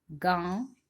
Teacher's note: जैसे गांव, 5 पर लगा है ना चंद्र बिंदु, और जब हम इसका उच्चारण कर रहे हैं गांव 5 तो आवाज आ रही है, चंद्र बिंदु जो है उसकी आवाज आ रही है नाक और मुख दोनों से। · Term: अनुनासिक